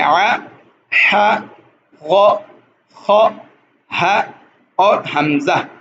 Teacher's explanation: حروف الحلق یعنی حلقی حروف جو حلق سے ادا ہوتے ہیں